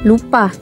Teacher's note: alofon a rendah atas tak bundar pusat